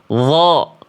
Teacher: Tinggal ditambahin pangkal lidahnya naik. Terasa seperti melafakkan qof.